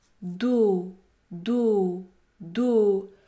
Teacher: lettre S est également muette elle n'est pas prononcée do do le mot do contient une syllabe qui se termine par une voyelle prononcée dans ce cas le O est un o fermé